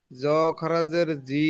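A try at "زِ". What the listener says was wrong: জ নয়, যা। যা। যা। যা খাড়া জের জি।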